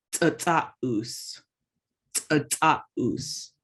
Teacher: Remember the C's in Lushootseed are like a TS sound. So when it's glottalized, it's going to be like a harder, kind of like a puff of air between your teeth.